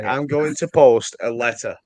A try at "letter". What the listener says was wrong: It isn't spelled L-E-D-D-E-R.